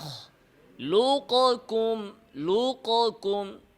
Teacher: কফকে কাফ দ্বারা পরিবর্তন করা হয়েছে কফটা পুরোপুরি তার পরের হরফ কাফ দ্বারা পরিবর্তন হয়ে গিয়েছে এটা হচ্ছে ইদগামে কামিল